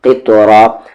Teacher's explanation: قاف بھی ہیوی ہے، طا بھی ہیوی ہے اور یہاں پر را بھی ہیوی ہوگا کیونکہ اس کی آواز اوپر جا رہی ہے